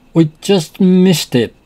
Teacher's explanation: Notice the emphasis on just to show the very recent past.